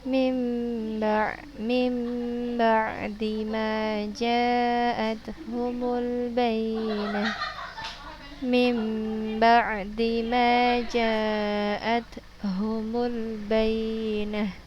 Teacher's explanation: Cara membacanya dibalikkan suara nun sukun atau tanwin menjadi suara huruf ba dengan berdengung. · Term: iqlab